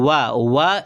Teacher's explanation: व एक ऐसा वर्ण है जिसका उच्चारण दात और ओष्ठ से होता है। तो इसको दंतोष्ठ कहा जाता है।